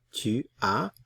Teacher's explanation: Notice the S is not pronounced.